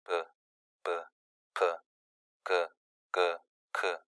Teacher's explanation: 모두 다 막혔던 공기가 터지면서 발음이 되고 있다는 사실을 확인할 수가 있습니다.